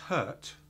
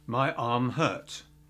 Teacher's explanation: So we cut the R out before a consonant.